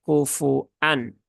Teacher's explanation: memnya tidak panjang ya, tetapi memnya pendek, cukup satu harokat saja, kemudian langsung ke huruf hamzah yang harokatnya dhammah tanwin.